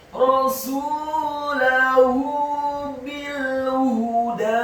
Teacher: huruf ha-nya dibaca tafkhim tebal dhammah 1 harokat dan huruf dal-nya dibaca tipis fathah 2 harokat karena harokatnya tegak.